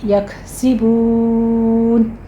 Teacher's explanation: کانو یکسبون الف مدہ واو مدہ 2 کاؤنٹ کیجیے اور پھر کاف پر ہمس ہوگا